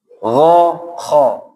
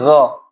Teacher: kalau kha ini anginnya berhembus, kalau ghain ditekan, jahar ditekan. Kha, nggak boleh nggo.